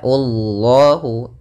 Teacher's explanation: lafzul jalalah dan lamnya dibaca dengan tebal, lam tafkhim. Ya, Allahu, karena sebelum lafal lam atau lafal Allah ada huruf dhammah.